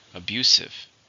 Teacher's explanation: How many syllables in the word abusive? 3. Stress on the second.